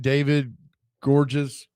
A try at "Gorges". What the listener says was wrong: David Gabriel George. There's an S, but it's silent, apparently.